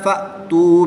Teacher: حمزہ ساکنہ کو ہمیشہ جھٹکا دے کر پڑھیں گے